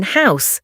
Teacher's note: Letter H said ace as in house. A soft breathy sound, softer than Turkish H, just breathe out.